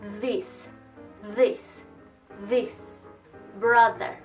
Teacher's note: verdad la boca está posicionada de igual forma pero esta vez sacamos voz o sea la lengua entre los dientes y las cuerdas vocales vibras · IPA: ð